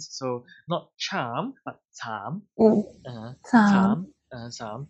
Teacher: Remember, this is not a round vowel, so this is at front. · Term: long A